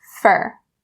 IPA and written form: fər (for)